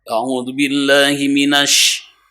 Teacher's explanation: Shin itu harus nyebur karena tersifati oleh sifat tafashi. Shin itu harus agak tebal.